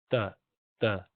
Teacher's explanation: زبان کی جو نوک ہے وہ اوپر کے دانتوں کی جو جڑ ہے اس میں لگائیں گے